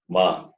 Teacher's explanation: Ma is both the lips and the nose. Labial plus nasal.